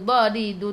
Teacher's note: tepi lidah menyentuh gigi geraham atas